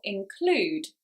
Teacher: it's on the second syllable, include, because this is a 2-syllable verb and so normally the stress falls on the second syllable.